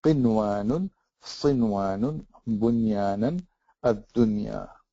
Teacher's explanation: so you have to pronounce the noon clearly, and that is called izhar mutlaq